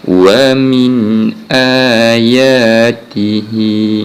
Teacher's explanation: Cara bacaannya kita menjelaskan bunyi bacaan nun mati tersebut, ataupun kita sebut huruf nun mati ini, hujung lidah kita tu kena pada langit belah atas